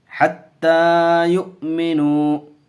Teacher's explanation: حمزہ ساکنہ جھٹکے سے پڑھیں گے. دیکھیے واو کی شکل میں حمزہ ہے یہ.